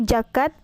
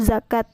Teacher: Yang ke-16 yaitu fonem Z diucapkan menjadi J. Contoh salahnya yaitu jakat, sedangkan contoh benarnya yaitu zakat.